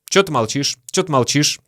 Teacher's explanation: очень часто мы вообще произносим «что» как «чё».